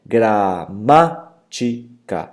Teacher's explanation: é antepenúltima, que é a sílaba ma, é forte. Por isso, uma palavra proparoxítona.